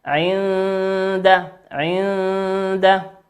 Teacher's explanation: النون هنا ساكنة أتى بعدها حرف الدال، والدال من حروف الإخفاء